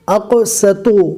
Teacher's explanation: قوف کو پور پڑھا جائے گا، اقسط۔ قوف کو پور پڑھنے کے چکر میں سین کو پور نہ پڑھ لے ورنہ یہ صاد بن جائے گا